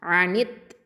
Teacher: அனித் அப்படின்னு சொல்லி அந்த நூன் கெஸ்ரா தவோட ஷத்தாவோட இணைஞ்சிரும். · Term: ஹுருஃபு ஷம்சியா